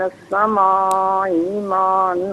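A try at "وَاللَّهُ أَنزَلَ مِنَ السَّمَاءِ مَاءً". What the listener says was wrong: اچھا، یہ باقی آپ نے ماشاءاللہ صحیح پڑھا، ما ان، یہ ما اس کو جو ہے وہ کھینچ کر پڑھا جائے گا، یہ مد لازم ہے، ٹھیک ہے، جزاک اللہ خیر۔ السلام علیکم۔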